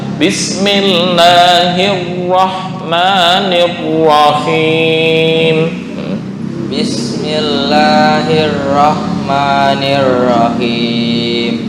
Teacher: Itu tafkhimnya kurang. Ra maksudnya menggetarkan ra-nya dihilangkan udah bagus, tinggal di tafkhim.